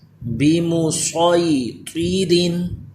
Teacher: صاد بھی پر ہو طا بھی پر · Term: حروف مستعلیہ